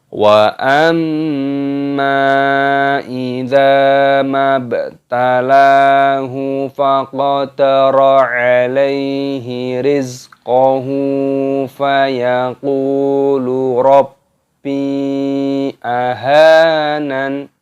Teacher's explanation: Perhatikan di sini terdapat mim tasdid. Ini hukumnya dibaca gunnah, dibaca berdengung. Cara mengucapkannya juga didengungkan.